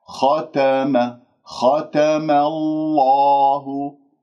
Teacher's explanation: الخاء مفخمة أفخمها مرتبة ثانية التاء والميم مرققتين